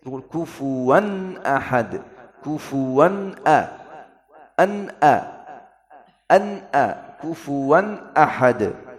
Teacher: Kufuwan ahad, ini tanwin bertemu hamzah. Kufuwan harus menjelas tanwin.